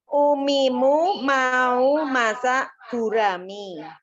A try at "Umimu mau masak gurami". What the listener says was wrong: Dikurangi, Bu. Dikurangi. Tidak keluar udara. Usahakan tidak keluar udara.